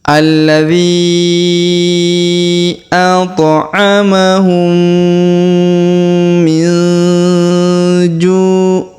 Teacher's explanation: huruf nun sukun bertemu ja, maka kita tahan dan kemudian kita dengungkan serta kita samarkan ya.